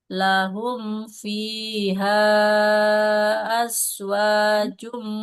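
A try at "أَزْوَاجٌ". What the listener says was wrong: azwajum. Nah, jangan jadi huruf sin ya. Azwajum Az. Nah, jangan as. Tahan aliran nafasnya. Kayak huruf Z, Ibu.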